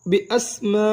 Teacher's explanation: حمزہ سین زبر اس بی اس. میم الف مد زبر ما. 6 حرکات لمبا ادا کریں گے